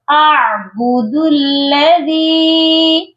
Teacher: حمزہ اور عین کی آواز کلیئر الگ الگ آنی چاہیے۔ دال کو ہم لام کے ساتھ ملائیں گے، بُدُ الَّذِي، اور دال کے ساتھ یا مدہ ہے، اس کو ہم نے ایک الف کے برابر لمبا کر کے پڑھنا ہے اور دال کو نرم بھی پڑھنا ہے۔